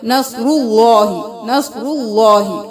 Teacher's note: را کے پر پیش ہے تو را کو بھی پر پڑھیں گے، اللہ کے حرف کو بھی پر پڑھیں گے